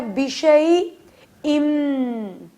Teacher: ن کو بالکل سائلنٹ کر کے بیشئی ام میں مکس کر دیں گے. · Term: ادغام